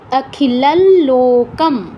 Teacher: অনুস্বারের পর ল আছে তাই ল অর্ধেক উচ্চারণ করছি